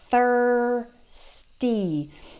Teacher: remember to to do that th with your tongue between your teeth